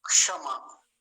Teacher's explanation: हल्का सा क का उच्चारण बहुत हल्का सा आता है शुरू में।